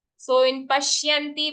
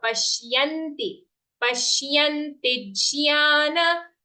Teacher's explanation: But it is Pashya, half sha joined to a full ya.